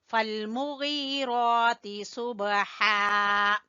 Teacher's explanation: ہا کو آپ نے وسط حلق سے نکالنا ہے، گلے کے درمیان والے حصے سے